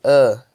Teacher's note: E por último, A, o schwa. É o som A, é a vogal medial central.